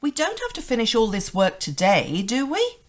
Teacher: this rising intonation at the end indicates that you're not sure what the answer was.